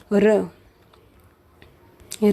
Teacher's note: एक बार टकराती हैं जीभ, टकराकर लुढ़कती हुई या कांपती सी बाहर निकलती हैं, वहाँ से बाहर निकल रहा है कोई व्यंजन, लुढ़क रही है वहाँ पर जीभ, कांप रही है वहाँ पर जीभ, वो लुंठित या प्रकंपित व्यंजन कहलाता है। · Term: प्रकंपित या लुंठित व्यंजन